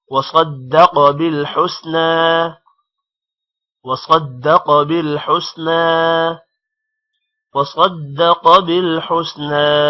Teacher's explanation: وَصَدَّقَ صاد موٹا ہوگا، دال پر شد ہے جس کی وجہ سے ایک بار دال صاد کے ساتھ ملے گا اور دوسری مرتبہ الگ سے پڑھا جائے گا. اور صدق قوف موٹا ہوگا، بالحسنى نون پر کھڑی زبر ہے تھوڑا سا لمبا کریں گے.